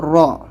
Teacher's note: تشدید ہے اور اس کے اوپر زبر ہے تو ہم را کو موٹا پڑھیں گے